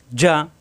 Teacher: জিব্বার মাঝখানে উপরে তালুতে লাগবে যা শক্ত হবে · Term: জিম